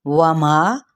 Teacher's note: واو ہونٹوں کی نا تمام گلائی کے ساتھ اور ما پہ مد اصلی بالالف، کا پہ بھی مد اصلی بالالف اور نون کی حرکت کو لمبا نہیں کریں گے۔